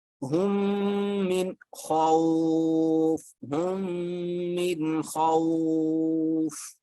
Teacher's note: اس لیے کہ اصول ہے نون پہ میم پہ اسمال ڈبلیو شد آ جائے تو غنہ کریں گے، آواز ناک میں لے جائیں گے